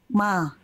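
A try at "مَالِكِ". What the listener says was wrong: mo. Tadi kalau tadi mo, bukan mo, tapi ma. Buka mulut sambil senyum. Mali, bukan ma, tapi ma. Maliki yaumiddin.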